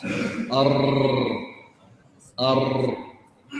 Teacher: فيصل الهواء فتهتز اللسان ثم يتولد منها اكثر من راء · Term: التكرير